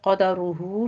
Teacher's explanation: قدرہ میں را مفخم پڑھی جائے گی